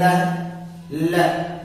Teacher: थोड़ा आगे चलते हैं, ये ल, क्या है, ल। तो देखो ल बोलते समय जीभ दांत को टच करती है, यानी ये क्या कराएगा, दंत।